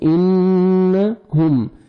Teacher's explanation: نون مشدد ہے، غنہ کریں گے. انہم، میم ساکن کا اظہار ہے، جلدی پڑھیں گے